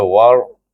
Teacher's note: Waw itu dia wasalkan dengan huruf ra yang mati, bunyinya war, tebal.